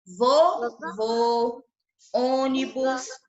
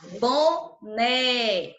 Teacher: Ele indica que a vogal tem o som fechado, né? Na sílaba tônica.